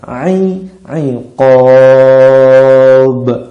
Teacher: Karena pada huruf ba ini kita wakafkan, kita berhentikan, maka huruf ko-nya dipanjangkan. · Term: mad arid lisukun